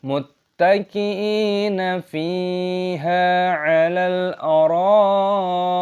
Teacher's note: Fiiha' alal ', ada sebuah ' lam ' , ' lam ' adalah ' sukun ', bacalah ' alal aroo-i '.' Mad wajib muttasil '. Perpanjang enam ketukan